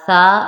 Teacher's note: سا حروف لسیہ میں سے ہوتا ہے، اس میں آپ نے سیٹی کی آواز نہیں دینی